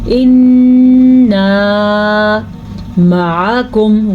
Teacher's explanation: نون کے اوپر غنہ ہو رہا ہے کیونکہ نون پہ شد ہے